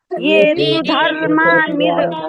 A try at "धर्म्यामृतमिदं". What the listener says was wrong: धर्मा नहीं है, धर्म्या, म्या, धर्म्या,